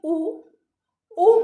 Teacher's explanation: ऊ बोलते समय होंठ गोल हो रहे हैं, वृत्त हो रहे हैं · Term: वृत्ताकार